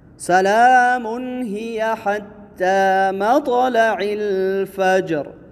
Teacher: طا حروف قلقلہ میں سے ہے، قلقلہ ہوگا · سلام یہاں تنوین ہے میم کے اوپر، اور تنوین کے بعد حروف حلقی میں سے حرف ہا آیا ہے تو یہاں پر اظہار ہوگا